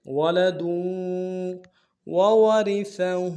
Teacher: ولد میں دال کی تنوین کو آگے واو کے ساتھ ملانا ہے، واو کے اوپر تشدید زور دیں گے ، وَلَدٌ وَوَرِثَهُ، دونوں واو کو را کو باریک ادا کریں